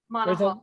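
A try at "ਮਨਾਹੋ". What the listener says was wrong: There's a little A. It's a tiny little A there. Tiny Manaho.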